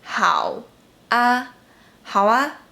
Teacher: When the previous character of 啊 ends with “u” or “ao”, 啊 would sound a little bit like 哇